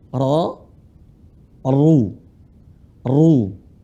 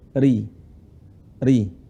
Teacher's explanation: ra dibaca tebal dalam keadaan dhamah fathah kemudian tipis dalam keadaan kasrah